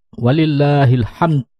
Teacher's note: ucapkan Dal sukun dengan jelas dengan Qalqalah dengan memantulkan huruf dalnya